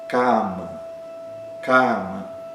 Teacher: Cama, cama, essa palavra com duas sílabas. O primeiro a é aberto e longo e o segundo é fechado e curto. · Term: a longo